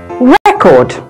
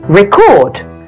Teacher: as a noun the stress usually falls on the first syllable and as a verb the stress usually falls on the second syllable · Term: word stress